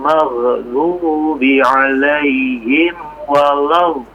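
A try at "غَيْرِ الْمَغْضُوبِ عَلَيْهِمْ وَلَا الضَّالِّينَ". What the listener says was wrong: Iya, afwan perhatikan maghdubi dia jangan dicentugkan ya, dipantulkan ya. Jangan enggak begitu ya. Dia memang tetap ada udara yang mengalir ya, tapi tidak dipantulkan tapi maghdubi.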